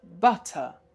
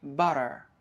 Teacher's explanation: So the T again is pronounced somehow as D, and the R is pronounced at the end